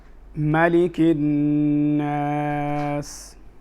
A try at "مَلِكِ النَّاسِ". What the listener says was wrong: أحسنت.